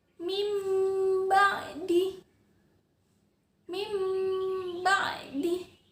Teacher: langsung dimasukkan ke bunyi mim Hai Harusnya kan bacanya mimba'di tapi karena huruf nun sukun bertemu dengan huruf ba ia ditukar dengan bunyi mim · nun sukunnya itu hilang. Kalian dengar nggak ada bunyi nun? Nggak ada kan? Langsung dimasukkan ke bunyi mim. harusnya kan bacanya min ba'di. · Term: iqlab